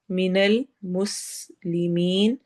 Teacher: مس میں سین میں سٹی کی آواز ہوگی، اور مسلمین آخر میں یا مدہ ہوگا.